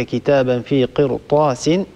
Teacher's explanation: الراء هنا ننتبه لا نرققها لورش لحرف الاستعلاء الذي بعدها